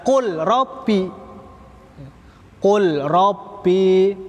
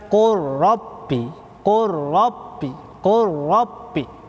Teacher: Lamnya diidghamkan kepada huruf ro.